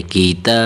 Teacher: اب دیکھیں یہ جو کیف ہے اس کیف کو باریک کر کے پڑھیں گے، اس کیف کو موٹا نہیں بنے گا، قوف نہیں پڑھیں گے بلکہ کیف پڑھیں گے۔ کیف کے نیچے زیر ہے، تا کے اوپر کھڑی زبر ہے، کھڑی زبر کو ایک الف کے برابر کھینچنا ہے، کیتا، ٹھیک ہے، کیتا۔